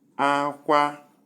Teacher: Number 2, we have high plus high, pronounced as Akwa, cry, Akwa, cry.